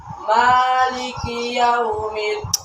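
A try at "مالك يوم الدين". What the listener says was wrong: হরফগুলো এত নরমভাবে উচ্চারণ করলে তো সুন্দর হবে না, যেখানে শক্ত সেখানে শক্ত। মালিকি কার শক্ত না, মালিকি ইয়াউমিদ্দিন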